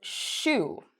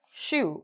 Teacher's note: you notice my lips are circled. Shoe, we're using both lips. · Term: SH sound